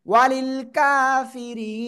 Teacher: عذاب ওয়াও জবর ওয়া, লাম লাম জালিল, ওয়ালিল ওয়ালিল ওয়ালিল ওয়ালিল, কাপ খড়া জবর কা, একালিপ টান, কা ফা জারফি, র ইয়া জাররি, একালিপ টান, র নিচে জের হলে কি হবে? চিকুন করে পড়তে হবে।